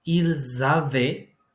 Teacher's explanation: I pronounced z because we have an S followed by a vowel in the next word. So this is going to be pronounced z.